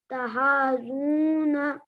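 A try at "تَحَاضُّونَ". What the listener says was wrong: तहाजून, बड़ा करके।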